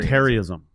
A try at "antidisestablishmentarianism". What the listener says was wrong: I think there's an extra little bit in there, right? Terrianism, not terrorism. Terrianism.